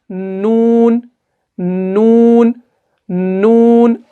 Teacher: آپ زبان کی ٹپ کو جو ہے اوپر والے سخت تالوں سے لگا کر پڑھیں گے